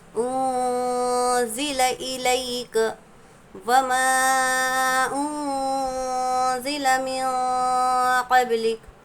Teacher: انزل الیک وما انزل من قبلک، یہاں پر حروف مدہ کے بعد حمزہ دوسرے کلمے میں ہے، مد منفصل کا قاعدہ ہوگا، نون ساکن کے بعد جو ہے زا حروف اخفا میں سے ہے تو نون کی آواز کو ہم ناک میں چھپا کر پڑھیں گے · اگر حروف اخفا کے 15 حروفوں میں سے کوئی بھی حرف اگر تنوین یا نون ساکن کے بعد ہو تو نون کی آواز کو ہم کو ناک میں چھپا کر پڑھنا ہے